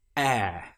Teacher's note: With this particular sound, it starts like the letter E or the sound E, the short vowel sound which we learned such as in bet. But here we stretch it out and make it longer.